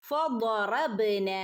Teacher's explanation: ضاد എപ്പോഴും ശ്രദ്ധിക്കണം, ഉയർത്തി പറയണം കേട്ടോ. ضاد വായ ഇങ്ങനെ നിറഞ്ഞു വരികയും വേണം